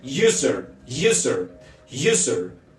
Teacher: empieza con u y es sonido semiconsonante no es sonido de vocal